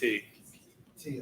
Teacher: It's always a hard T. T, okay. Yeah. It's never an aspirated TH sound like in English.